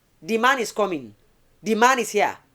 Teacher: But of course we say the is a voiced dental fricative.